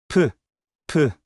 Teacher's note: 입술을 다물었다가 바람과 함께 터뜨리는 소리예요. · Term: 피읍 소리